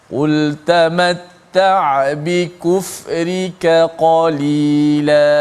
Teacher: Kita jaga sifat kaf yang nipis dan kekalkan sifat qaf yang tebal.